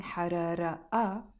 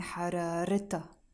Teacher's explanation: because I'm saying حرارتها, and I'm adding the a, the possessive ending, which means her, I am pronouncing the Taa Marbouta, and I'm not saying harara a, I'm saying hararita, her fever.